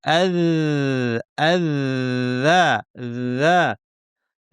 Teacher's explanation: জিহ্বার শীর্ষ থেকে একটু ভিতরের অংশ, এটাকে বলা হয় তরাফুল লিসান, উপরের পাটির দাঁতের শীর্ষে লাগিয়ে যা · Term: জাল